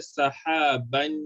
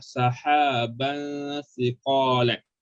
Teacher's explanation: Kalau ban bunyi nun tu jelas, dia akan jadi izhar. Kita nak dengungkanlah sahaban siqalan.